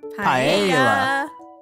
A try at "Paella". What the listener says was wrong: Did you just pronounce the L's?